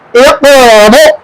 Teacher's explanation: یہ حمزہ ساکنہ ہے، اس کو پڑھتے وقت جھٹکا ہوگا۔ اگر یہاں ہم جھٹکے سے پڑھیں گے تو حمزہ ساکنہ پیدا ہوگا.